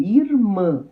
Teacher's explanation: oxítona, onde a sílaba tônica é a última · O mã é a última sílaba, é a sílaba tônica. Então, é uma palavra oxítona.